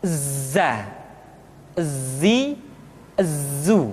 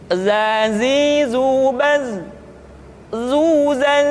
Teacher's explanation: ketika kita mengucapkan huruf dza suara kita mengalir akan tetapi nafas tidak boleh mengalir